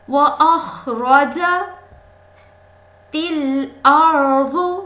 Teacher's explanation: وَأَخْرَجَ، خا اوپر والے حلق سے، وَأَخْرَجَتِ الْأَرْضُ، را ساکن ہے اور اس سے پہلے حرف پر زبر ہے، اس لیے اس را کو پر یعنی موٹا ادا کریں گے